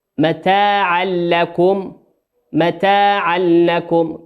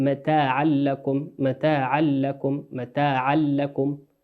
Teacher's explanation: الحركة في متاعا تنوين أتى بعده حرف اللام في الكلمة لكم، واللام من حروف الإدغام بغير غنة، إدغام بغير غنة.